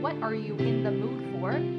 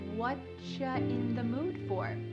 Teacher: Here the word you has been reduced to cha.